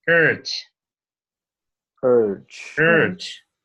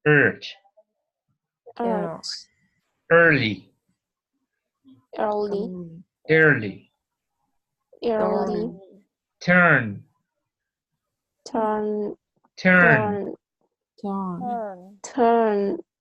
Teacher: es una E que la llevan un poquito más atrás.